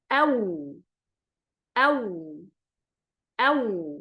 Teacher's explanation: الواو تخرج بانفتاح ما بين الشفتين مع تدوير بينهما، يعني ندور الشفتين وتكون هذه الدائرة مفتوحة فيخرج حرف الواو.